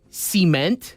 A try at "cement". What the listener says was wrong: Cement. Why are you putting the emphasis there?